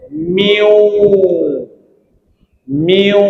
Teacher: Jadi masukkan nun mati pada wau bunyi dia miu. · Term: idgham